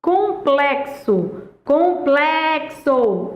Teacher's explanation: Complexo. A sílaba tônica é plé.